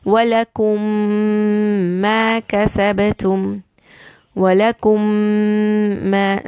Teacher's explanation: I will do a joining, and since both meme are together, you have to do a gunna. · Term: idgham